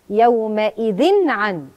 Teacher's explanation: نون بتاعه التنوين اظهرها لان وراها حرف من حروف الاظهار اللي هو العين. يومئذ عن على طول النون تبان، مش هغنها لا ولا اخفيها.